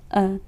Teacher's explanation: मध्य स्वर जिह्वा के मध्य भाग से उच्चरित